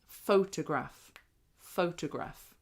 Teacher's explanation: So in that word, we put the main stress on the first syllable.